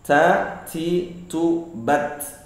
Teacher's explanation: tapi di huruf ta, huruf hijaiyah ada desis.